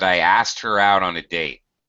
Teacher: notice you can't even really hear the K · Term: drop the K